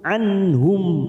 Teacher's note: dengan akhiran huruf mim dan kita wakaf di sini maka bibir kita tertutup